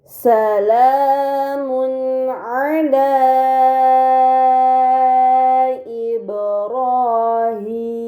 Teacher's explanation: terdapat domahtain bertemu dengan huruf Ain ini dinamakan izhar halqi maka domahtain tersebut harus dibaca secara jelas